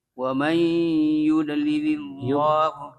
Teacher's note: Dha-nya tidak dipantulkan, bukan qalqalah.